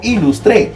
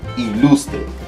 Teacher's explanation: la fuerza de voz me obliga a que piense en la penúltima